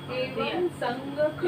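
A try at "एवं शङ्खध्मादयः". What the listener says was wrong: एवं संज्ञक नहीं है, क्या पढ़ रहे हो, एवं शंख, एवं शंख धमादयः, एवं शंख धमादयः।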